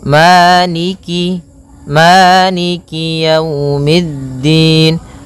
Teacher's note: kasrahnya juga disempurnakan, jangan sampai dibaca dengan e, tapi dia i